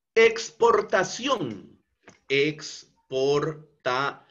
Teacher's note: la sílaba tónica se encuentra en la última sílaba. Y como esta es una palabra que termina en la consonante n, entonces por eso es que es tildada. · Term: palabra aguda